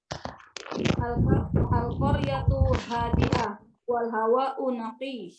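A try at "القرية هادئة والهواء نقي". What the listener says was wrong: Jamil.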